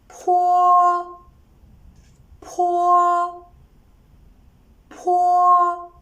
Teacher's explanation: Different from bo, this one is an aspirated voiceless bilabial sound. The position of articulation is the same as that of bo, but there is air that is released forcibly with a puff when you pronounce it.